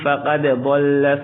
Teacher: ومن ادغام، ومن يتبدل الكفر، کفر را کو پر پڑھیں گے، را پر زبر ہے، ومن يتبدل الكفر بالإيمان فقد ضل، فقد دال پر قلقلہ ہوگا، اس طرح نہیں پڑھیں گے فقد ضل، نہیں، فقد ضل الگ الگ، فقد ضل سواء السبيل۔